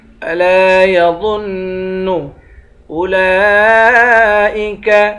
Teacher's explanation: لام پر کھڑا زبر بھی ہے اور مد بھی ہے، اس مد کو 5 الف کی مقدار کھینچ کر پڑھیں گے